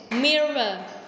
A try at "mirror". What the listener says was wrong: Mirror. Mirror. mirror. Mirror. Mirror.